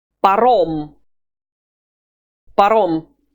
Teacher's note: You don't need to aspirate it as in English. It's a very flat sound.